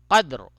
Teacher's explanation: فی لیلۃ القدر، فی لیلۃ القدر، ٹھیک ہے، قدر، تو یہاں پہ جو ہے قد دال کے اوپر جو ہے قلقلہ ہوگا، کیونکہ دال پہ ساکن ہے، دال ساکن ہے، اس پہ جزم ہے، اور یہ را جو ہے وہ پر ہوگی۔